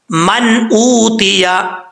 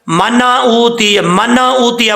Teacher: نون کو صرف ظاہر کرنا ہے اور آواز نون کے اوپر جم جائے، لوٹنی نہیں چاہیے. جب لوٹے گی تو قلقلہ ہو جائے گا، قلقلے سے بھی بچنا ہے.